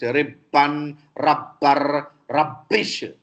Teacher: No gemination possible in English, which is there in Telugu.